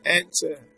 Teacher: the stress falls on the first syllable